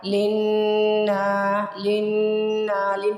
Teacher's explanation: لن پہ پہلے گنہ کیا، پھر اس کو الف کی وجہ سے تھوڑا لمبا کر دیا، سٹریچ کر دیا، کھینچ دیا۔